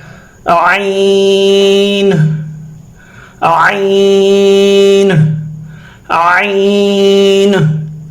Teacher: عین، وسط حلق سے ادا ہونے والا حرف ہے، حروف حلقی میں شامل ہے۔ یہ ح اور عین کا مخرج ایک ہی ہے، گلے کو یوں کھولنا ہے، ح عین گلے میں گھمانا ہے، عین کو گلے میں گھمانا ہے۔